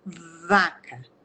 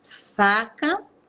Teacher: Então, é o mesmo movimento da boca. A única diferença é que um vibra as pregas vocais e o outro não.